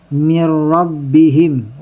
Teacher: Kaya may stambe ka dito. Itong nun na bumangga ng ra ay nasa idgham na bilago na. Kaya huwag kang magtambay dito.